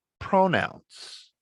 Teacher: now the stress is on the first syllable